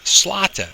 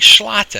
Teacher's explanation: The S is broad, so I'm saying slata. I'm not saying schlata.